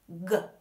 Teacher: You make an explosive, voiced sound. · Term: g sound